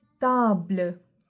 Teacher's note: It is pronounced much softer as compared to English and there is no aspiration.